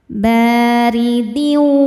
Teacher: Huruf ro dibaca secara tarkik karena berharakat di bawah yaitu harakat kasrah. Dibacanya tipis. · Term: tarqiq